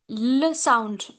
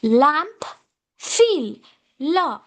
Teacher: So when I say L sound, my tip tip of the tongue touches to the ridge, upper ridge and air flows around the sides of the tongue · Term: lateral sound